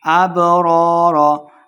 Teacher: بہ حروف قلقلہ سے ہے، ساکن ہے تو خوب واضح کریں گے